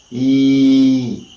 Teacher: we say that e is a sound which is a front close unrounded long sound